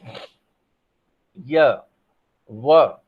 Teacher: उच्चारण अवयव में कहीं भी पूर्ण स्पर्श नहीं होता है और वायु क्या होती है, वो उच्चरित हो जाती है। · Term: अर्ध स्वर